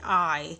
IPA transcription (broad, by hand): ai